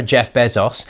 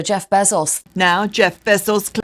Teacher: Well, that same thing is happening in Bezos, but doubled, because both syllables in his own pronunciation are both diphthongs, A-O. And now some British accents are taking both of those diphthongs and turning them both into monophthongs